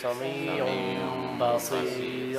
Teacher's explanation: You change the noon to a meme, and the meme has a ghunna.